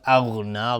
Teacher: غین از حروف استعلا غلیظ تلفظ میشه